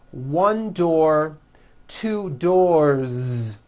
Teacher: with a voiced Z ending